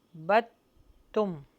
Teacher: جو دال کے اوپر جزم ہے اس کو ہم حذف کر دیں گے اور اس کو با کو ملا دیں گے ہم تا سے